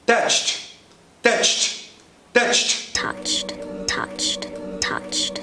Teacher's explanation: Você sai de um tch para um T seco.